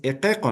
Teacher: Cuando está la vocal I y la vocal U, junto a estas consonantes, va a seguir siendo, va a seguir con la vocal I, pero al momento de pronunciar, se va a pronunciar la I como si fuera vocal E y la U se va a pronunciar como si fuera vocal O